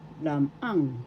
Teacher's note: First syllable lam, second syllable ang. The accent is in the second syllable